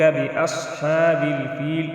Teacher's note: صاد مستعلی حروف میں سے اس کو بھی ہم موٹا ادا کریں گے